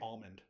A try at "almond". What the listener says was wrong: Almond. Almond is how my family says it, but I think you need a little bit more L than that.